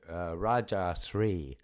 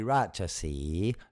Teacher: Anything that is SRI as Sri is actually pronounced in Thai as Si. You don't pronounce the R, so it would be Rajasi, not Raja Sri.